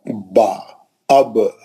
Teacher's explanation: होठ का आधा हिस्सा जो बाहर रहता वो सूखा रहता। ब जो है होठों के गीले हिस्से को लगाने से है ना निकलता है